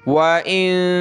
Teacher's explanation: یہ نون ساکن ہے، یہاں ہم نے ناک میں آواز پیدا کرنی ہے